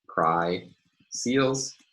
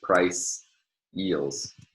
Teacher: It produces this minimal, this seeming surface minimal pair of pry seals with the diphthong, the lower diphthong I, versus price eels on the other hand, with the higher diphthong. This distinction between these two diphthongs is rather subtle and difficult here, but it makes for a nice instance, a nice example.